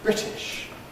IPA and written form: ˈbrɪtɪʃ (British)